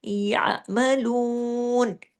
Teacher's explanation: ऐन की आवाज आपके गले में आना चाहिए ऐन को आपने अलिफ की तरह या मलूर ऐसे नहीं कर देना यमलून और तमाम ये बारीक हरूफ है। · लू को हमने दो हरकात खींचना भी है। क्यों? वाओ मद्दा की वजह से यहां पे आयत खत्म हो रही है।